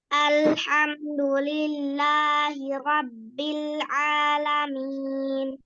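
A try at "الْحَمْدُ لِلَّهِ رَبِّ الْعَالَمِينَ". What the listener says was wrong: Ro-nya lebih tebal lagi. Ro. Rabbil ro. Alamin, jangan alamin, bukan a. Rabbil alamin.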